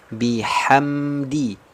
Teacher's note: kasrah sempurna rahangnya turun vokalnya I